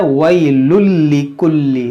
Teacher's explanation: इस या को न ज़्यादा खींचना है न झटका देना है, नरमी के साथ मारूफ पढ़ना है। जैसे वई, जब बाद लोग क्या पढ़ते हैं वई लुल्ली, तो ये गलत है। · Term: या लीन